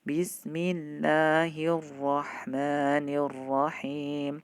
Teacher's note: Pada kata ar-Rahman ini masuk alif lamnya tidak dibaca tapi langsung masuk kepada ra, namanya idgham. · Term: idgham syamsiyah